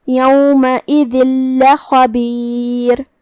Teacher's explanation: یہاں حکم ہے ادغام، ادغام کا معنی ہے حرف کو حرف میں داخل کر دینا، تو ہم یہ تنوین کو لام میں داخل کر کے بغیر غنہ کے لیکن تشدید کے ساتھ یہ حکم کو ادا کریں گے۔ یومئذ لخبیر جو کہ تشدید زبر کا ہے تو اس کا دھیان رہے۔